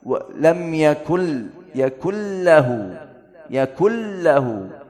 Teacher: idgham tidak ada ghunnah jangan walam yakun lahu, yakun tidak harusnya baca ghunnah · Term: idgham bila ghunnah